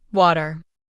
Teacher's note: In American English, we often say water with a soft d sound in the middle. In British English, it might sound like water.